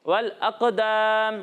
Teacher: والاقدام. یہاں قاف کو موٹا پڑھنا ہے اور دال کو باریک پڑھنا ہے